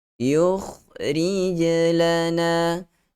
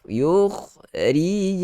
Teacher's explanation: Fad'u lana rabbaka yukhrij lana ada huruf kha. Huruf kha di situ keluar makhrajnya daripada hujung tekak kita. Tekak kita macam ni ada 3 bahagian, pangkal, tengah dan hujung.